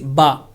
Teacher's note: دونوں ہونٹوں کے ملنے سے یہ با ادا ہوتی ہے